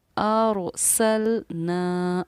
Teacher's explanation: राय साकिना को हम पुर पढ़ते हैं, यानी कि मोटा पढ़ते हैं, यानी मुंह भर कर पढ़ते हैं। अरसलना, इसलिए हमने यहाँ राय साकिना को मोटा पढ़ा है।